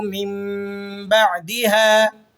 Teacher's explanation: نون ساکن کے بعد حرف با آ جائے تو وہاں ہم نے نون کی آواز کو میم سے چینج کر کے پڑھنا ہوتا ہے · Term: اقلاب